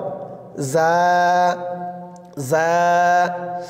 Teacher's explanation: তারপর জার মাখরাজ, জিহ্বার আগা সামনের নিচের দুই দাঁতের পেট ও আগার সঙ্গে লাগিয়ে উচ্চারিত হয়